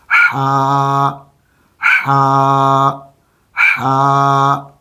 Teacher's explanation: ہا، یہ حلق ہے، حلق کے 3 حصے کر لیں۔ تو جو حلق کے 3 حصوں میں سے درمیانی حصہ ہے، یہاں سے ہا پڑھی جائے گی۔ ہا، اندر سے آپ نے ہوا کا پریشر بنانا ہے، اس کو گلے کے اندر لا کر حلق کے درمیانی حصے پر آپ اس کو ڈالیں گے تو آپ کی یہ آواز نکلے گی ہا والی، ہا ہا ہا۔